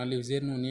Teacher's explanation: آواز کو ناک میں لے کے جانا ہے غنہ، اور اس کی مقدار کتنی ہے؟ ایک الف کے برابر